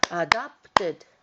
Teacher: three syllables adopted with the stress in the middle syllable